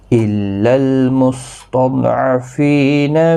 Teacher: إلا تشدید والے حرف کو سختی کے ساتھ پڑھیں تاکہ تشدید ظاہر ہو، لام ساکن کو ہلانا نہیں۔